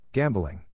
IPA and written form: ˈgæm blɪŋ (GAMBLING)